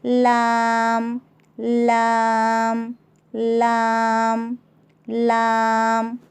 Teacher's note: ज़ुबान की नोक के करीबी हिस्से को ऊपर के दांतों के मसोड़ों को लगाने से लाम निकलता है, जैसे लाम, लाम, लाम, लाम।